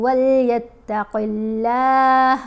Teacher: قاف کو موٹا پڑھیں گے لیکن اللہ کی لام کو موٹا نہیں پڑھیں گے، کیونکہ لام سے پہلے قاف ہے، اس کے نیچے زیر ہے۔